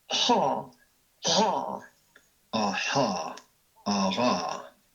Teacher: Then we take the pharyngeal fricatives, made by constricting the pharynx.